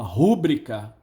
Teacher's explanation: Não, é rubrica. Quando alguém fala rúbrica, está apenas recuando a sílaba tônica, o acento tônico. A palavra é paroxítona e ele a está usando como se fosse proparoxítona.